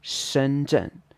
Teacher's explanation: Shenzhen would be 深圳, first tone and then a fourth tone.